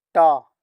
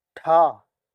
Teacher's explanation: टा अल्प प्राण अघोष, ठा अघोष है महाप्राण